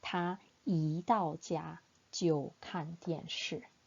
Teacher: Because 到 is the false tone, then 一 should be pronounced with the second tone